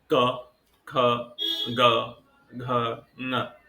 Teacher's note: तो इन सब में कंठ ही हमारा सब सर्वाधिक सक्रिय है।